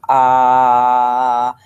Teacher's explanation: you hear a vibration that vibration is considered voicing the vocal folds are vibrating together